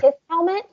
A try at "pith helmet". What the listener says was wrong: Pith, yes. Well, it sounds like you have like a lisp. Like, it's a pith helmet.